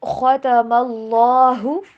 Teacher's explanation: خا کو پر پڑھنا ہے